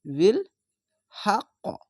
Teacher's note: এটি একটি কলকলা হয়ে ওপর দিকে সাউন্ড যাবে